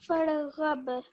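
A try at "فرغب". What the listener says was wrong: What you're saying is farghab. I can hear a slight jerk on the ra. No, far.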